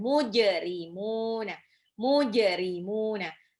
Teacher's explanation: Alif lam komariah di alnya, jadi dibaca jelas. Jimnya jim pantul. Itu adalah qalqalah, dipantulkan.